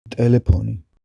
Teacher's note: Le son f n'existe pas et est remplacé par le p aspiré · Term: [pʰ] aspiré